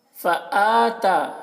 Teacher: حمزہ اور تا دونوں میں کھڑا زبر ہے تو ایک الف کے برابر دونوں کو کھینچ کر پڑھیں گے